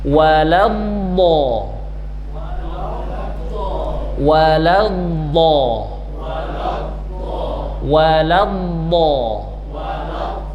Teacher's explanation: ujung ujung lidah menyentuh dengan gusi yang depan atas tapi bukan menjadi pusat suara